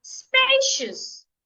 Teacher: two syllables I'm stressing the first syllable